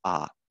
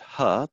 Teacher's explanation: the only difference between ah and ha the voiceless h is the presence or absence of voicing